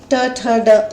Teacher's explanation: ये बोलने में भी आपको जो जीभ है वो मूर्धा का स्पर्श करती है, तो ये कहलाती है मूर्धन्य।